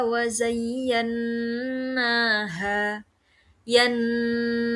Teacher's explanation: yang makhrajul hurufnya keluar dari hidung ya. Hidungnya bergetar ketika mengucapkan mim dan juga nun. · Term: gunah